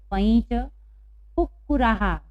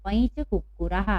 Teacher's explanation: पैंच कुक्कुराहा। यहाँ पर भी विसर्ग के पहले आ की मात्रा है, इसलिए हम हा का उच्चारण कर रहे हैं।